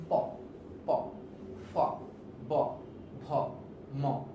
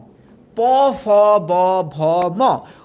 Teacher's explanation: নিচের ঠোঁট উপরের ঠোঁট একে অপরের সাথে একটা বাড়ি খায়, যেমন প, প, ফ, ব, ভ, ম। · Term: ওষ্ঠ ব্যঞ্জন